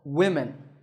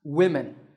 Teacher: written with five letters and it's spoken with five sounds but notice that both the o and the e are pronounced as short e sounds